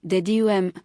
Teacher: Iambic, unstressed then stressed